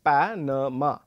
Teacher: the word Panama has the stress on the first syllable